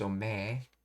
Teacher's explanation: So that's right, this is omae, but it's being pronounced in a masculine, rough way of omoe. Omae being pronounced as ome. So omae becomes ome.